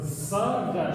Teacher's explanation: На севере это произносится «саргаш», то есть это «с», это «ш». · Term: сокающим